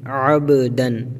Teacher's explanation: تو اس کو پڑھتے وقت اس کی آواز پلٹ کر لوٹ آئے گی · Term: قلقلہ